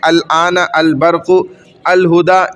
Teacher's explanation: دیکھیں تو ال کا لام ظاہر ہو رہا ہے، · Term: حروف قمریہ